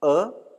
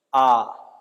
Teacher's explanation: तो आपको स्पष्ट उच्चारण में अंतर दिखाई दे रहा होगा कि जब हम अ बोल रहे हैं वो एक मात्रिक है, जब हम आ बोल रहे हैं वो द्विमात्रिक है